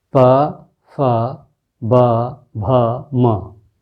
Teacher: ओठ, ऑब्वियसली ओठ दिख रहे हैं, ओठ से टच हो रहा है, स्पर्श हो रहा है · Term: ओष्ठ